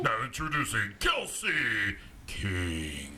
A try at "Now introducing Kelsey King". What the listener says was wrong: No, you have to go more like king, like up.